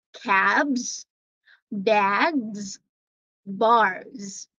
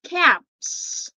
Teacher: cab all right so I'm not pronouncing the letter s there as s but it's Z